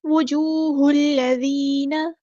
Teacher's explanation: ہا کو لام کے ساتھ ملا دیں گے، حمزۃ الوصل ہمارا ڈراپ ہو جائے گا. ذال باریک پڑھیں گے، ذال کو نرمی سے ادا کریں گے، یا مد آ گیا تو مد اصلی کریں گے.